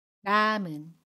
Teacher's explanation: 남의 받침 미음 뒤에 모음이 오면 미음이 이응 자리로 이동해서 남은 이라고 발음합니다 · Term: 연음